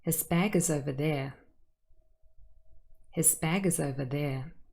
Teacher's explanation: This is a typical falling intonation. We use it for statements if we just want to state a fact.